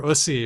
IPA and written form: ʊsi (-USSY)